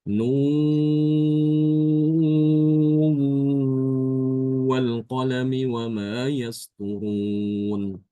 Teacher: nunnya itu diidgamkan ke huruf wawu disertai gunah disertai dengan dengung